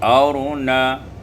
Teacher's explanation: Pada ayat 153 arina iskanur ra al mufakhamah, disukunkan ra dan dibaca tebal